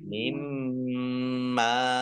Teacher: Mimma ini harusnya ada nun sukunnya karena ini terdiri dari 2 huruf min dan ma. Nun sukun bertemu dengan huruf mim, bacaan idgham bihunna. Masuk dengan mendengung, yaitu mendengung mim ditandai mimnya ada tasdid.